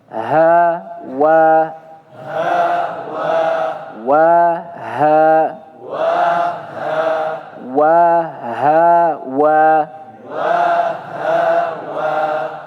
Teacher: Ha ini tempat keluarnya di tenggorokan. Tepatnya di tenggorokan paling bawah atau paling dalam. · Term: ha tebal